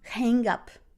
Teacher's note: you can hear this g, okay, in this connection